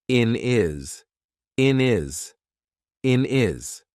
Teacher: We've taken away that H completely and we've made it into one word.